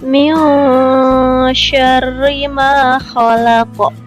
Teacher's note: Huruf shin dilafalkan dengan nafas yang menyembur.